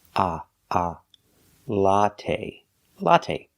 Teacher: the first syllable a latte it's the short o sound like hot and stop it's a short open Sound